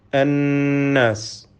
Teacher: അന്നാസ്, ഇതിലെ നൂൻ മുഷദ്ദദ, ഷദ്ദ നൽകപ്പെട്ട നൂനിനെ മണിച്ചുകൊണ്ട് ഉച്ചരിക്കണം. 2 ഹറക്കത്തിൻ്റെ അളവിൽ ഗുന്നത്ത് നൽകണം എന്നർത്ഥം.